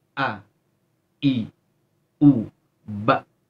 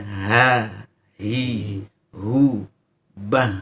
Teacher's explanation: Tahan nafas, tahan suara ketika hamzah.